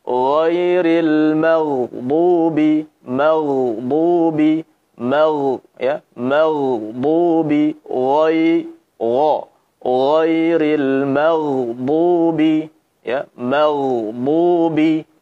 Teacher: suaranya naik ke atas, pangkal lidah terangkat, ya, ya, kemudian saat kasrah, ri, ketebalannya berkurang. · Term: ditebalkan